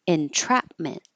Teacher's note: the T staying a t because it's in the stress syllable even though it's after an N